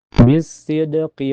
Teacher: Karena ada huruf Qalqalah, yaitu Dal, yang terletak di tengah kata. Dibaca dengan pantulan yang lebih kecil karena aturannya adalah Qalqalah Sughra. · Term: qalqalah sugro